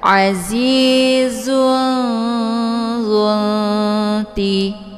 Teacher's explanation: Cara bacanya tanwinnya disamarkan kemudian siap-siap menuju ke huruf dza. Azizun ya. Jadi ini tanwinnya bagaikan bacaan yang digantungkan. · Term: ikhfa ausad, ikhfa al-sad